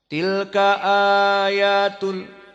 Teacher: Mad badalnya itu hanya qasr, dibaca 2 harokat.